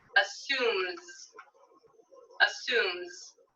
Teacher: assume ends with a voiced consonant so i'll add z for the s sound